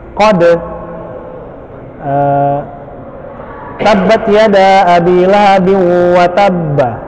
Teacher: Qalqalah menurut bahasa artinya bergetar, sedangkan menurut istilah adalah pengucapan huruf sukun yang disertai dengan getaran suara pada makhrajnya sehingga terdengar suara yang kuat